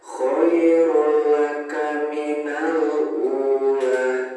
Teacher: Di sini ada harokat tuma tanwin yang bertemu dengan huruf lam. Ini merupakan bacaan idgham bila guna, jadi harus dibaca jelas.